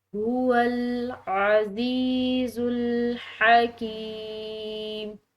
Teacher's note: حلق سے ادا ہونے والی ہا ہے، اس کو حلق سے ادا کریں گے · یا ساکن اس کو ہم کھنچاؤ دیں گے کیونکہ یہ مدہ ہے